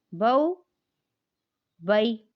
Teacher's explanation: अब इसका सवाल बन रहा है कि हरूफ़े लीन को कैसे पढ़ेंगे। हरूफ़े लीन को बग़ैर खींचे, बग़ैर झटका दिए नरमी से मारूफ पढ़ेंगे